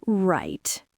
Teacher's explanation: A long drawn out fall rise. Right. It is incredibly sarcastic.